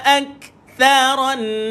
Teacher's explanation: Tha hujung lidah dikeluarkan. Tha duduk dekat gigi atas, bawah gigi atas.